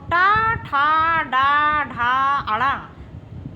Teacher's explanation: टा वर्ग का उच्चारण स्थान मूर्धा होता है